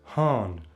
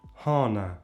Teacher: But Gig also has nasal vowels still. And there is an A which can be pronounced nasalized.